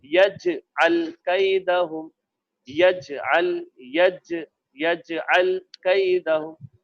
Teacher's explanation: تو دیکھیں جیم پر جزم ہے اور جیم کی آواز پلٹتی ہے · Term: حروف قلقلہ